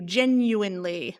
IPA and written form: ʤɛnˈjuˌwaɪnli (genuinely)